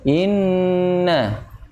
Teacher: Inna sampai benar-benar masuk ke pangkal hidung. Inna. Karena minimal 2 harkat ya. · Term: Bacaan dengung